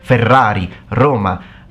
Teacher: we pronounce the r with a rolling okay so we pronounce it with this very strong sound